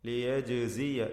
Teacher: ജീമിൻ്റെ സുക്കൂൻ ഖൽഖല നൽകി ശബ്ദം ചലിപ്പിച്ച് വ്യക്തമാക്കണം.